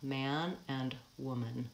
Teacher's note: Man, vowel a, but that same spelling in the word woman is the vowel schwa.